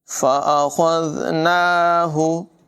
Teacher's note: خا کو پر ادا کریں گے، ذال میں بغیر سیٹی کے ادائیگی ہوگی